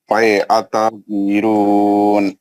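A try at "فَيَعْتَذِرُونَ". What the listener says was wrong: عین کا آواز کون نکالیں گے؟ فیعتذرون.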